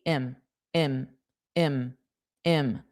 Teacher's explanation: im it's not a strong i, it's like very lazy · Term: lazy i